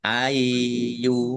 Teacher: Ya-nya dibaca dobel, ada tasdidnya dibaca ai dulu.